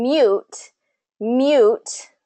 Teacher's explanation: it has that invisible Y in it too